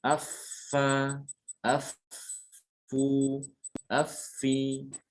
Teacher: Ada sifatnya nanti dia sifat huruf fa itu dia ada hembusan nafas. Nafas mengalir dan juga suara mengalir.